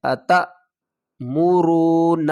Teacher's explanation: جھٹکا دے کر پڑھیں گے، حمزہ ساکن ہے